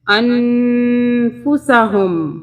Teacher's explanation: اب یہاں پہ بتا دیتی ہوں آپ کو کہ یہ جو نون ہے جزم والا، جب جزم والا نون آئے گا اور اس کے آگے اخفا کا حرف آئے گا، یہ فا جو ہے اخفا کے حرف میں سے ہے، تو ہم اس نون کو 2 سیکنڈ کے لیے اس کا اخفا کریں گے، 2 سیکنڈ کے لیے ناک میں رکھیں گے